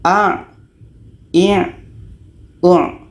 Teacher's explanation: jadi letaknya Ain ini di tengah-tengah tenggorokan